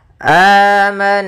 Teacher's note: ini amanna pada lafal A itu mad badal kita namakan dengan mad badal yaitu panjangnya dua harakat